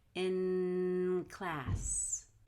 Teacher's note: hold the in and in all the way till you get to class